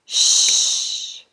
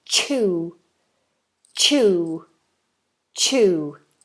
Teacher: ch in English is not sh but a more explosive sound ch. So the tongue goes up onto the roof of the mouth.